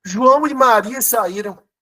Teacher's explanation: tem som de i e se escreve com a vogal e